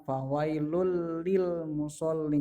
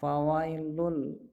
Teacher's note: Jadi bukan harusnya, kalau sesuai dengan tulisannya itu dibaca fawailun lil musallin, tapi karena terdapat hukum bacaan yaitu bila gunnah, maka membacanya fawailul lil musallin. Jadi tanwinnya itu samar-samar, fawailul, bahkan tidak terdengar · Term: Idgham bila gunnah